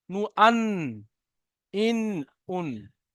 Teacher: নুন জিভের আগা, তার বরাবর উপরের তালুর সাথে লাগিয়ে উচ্চারিত হয়।